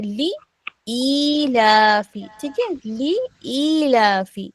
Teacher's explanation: ली सिर्फ एक हरकत है, ठीक है, लाम में सिर्फ एक हरकत है, अच्छा अच्छा तो लाम को नहीं खींचना है, लेकिन ई को खींचना है